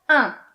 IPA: ɛ̃